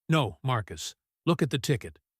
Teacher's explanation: She emphasized no and look to make him pay attention.